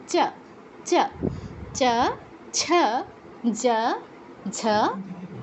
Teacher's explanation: এই যে আমাদের দন্ত আছে না, দন্তের ঠিক পরের অংশটা, উপরের যে মাড়ি, উপরের মাড়ি, দাঁতের ঠিক পরের অংশটা হচ্ছে আমাদের তালু। তো তালুতে জিহ্বা স্পর্শ করে চ বর্গের অক্ষরগুলো উচ্চারণ করতে হবে।